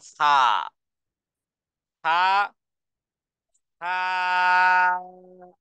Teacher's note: জিহ্বার একেবারেই আগা সামনের উপরের দুই দাঁতের একেবারে আগার সাথে লাগিয়ে